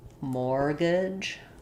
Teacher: So for mortgage, the t is silent.